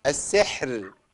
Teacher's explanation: كل كلمه سحر ها نقف عليها بترقيق الراء